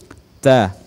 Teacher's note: ujung lidah disentuhkan di Pangkal gigi depan atas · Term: huruf ta